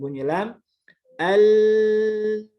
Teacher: bunyi yang mengalir dari kanan kiri lidah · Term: huruf lam